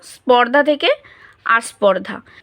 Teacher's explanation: আদি স্বরাগম হচ্ছে কি শব্দের শুরুতেই যদি যুক্ত ব্যঞ্জন থাকে তাহলে উচ্চারণের সুবিধার জন্য যুক্ত ব্যঞ্জনটির পূর্বে একটি সুবিধাজনক স্বরধ্বনির আগমন ঘটে